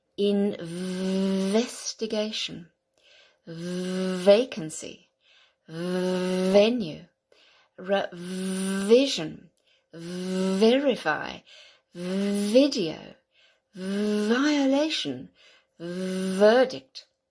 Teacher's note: Now we've done the F and another one, but because the F and the V, the same is here, they're exactly the same shape here, but one is voiced and one isn't. Okay, so the V is the voiced version of the F